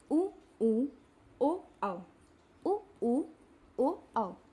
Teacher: इनको बोलने में हमारे होठों का आकार गोल हो रहा है। · वृत्ताकार वे स्वर जिनके उच्चारण में हमारे ओठों का आकार गोल होता है। जिन स्वरों को बोलने में हमारे ओठों का आकार गोल होता है उन्हें हम वृत्ताकार स्वर बोलते हैं, जैसे उ, ओ, औ।